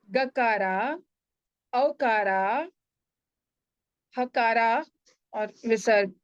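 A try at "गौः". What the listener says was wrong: Why akara there? Gauho. Gauho.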